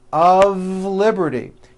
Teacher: notice how I connected the word of with the word liberty.